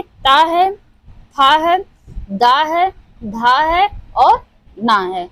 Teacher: ता वर्ग जो हमारा है वो दंतव्य से उच्चारित होता है। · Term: दंतव्य ध्वनि